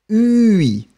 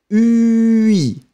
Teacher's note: Make it longer, especially for the U, to make it clear.